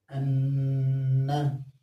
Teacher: ایک الف کی مقدار غنہ ہوتا ہے